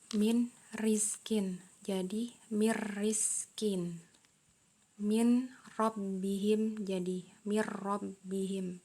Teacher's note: Nah, untuk yang halaman 26 ini kita mengenal nun sukun atau tanwin masuk dengan suara tak dengung ketika bertemu dengan huruf ro. Jadi suara nun atau tanwinnya hilang menjadi ro. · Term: idgham bila gunah